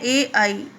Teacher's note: कंठ और तालु से उच्चारित होने वाले वर्ण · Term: कंठ तालु